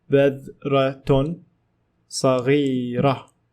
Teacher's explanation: Notice how I pronounced Taa Marbuta as ha because I stopped. If I continued in speech, I will say badratun saghiratun.